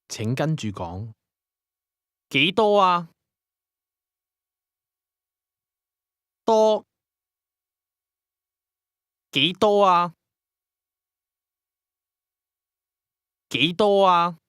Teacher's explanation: the tone rises from the mid level to the high level before returning to the mid level.